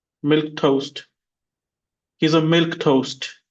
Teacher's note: Two syllables. The stress is on milk.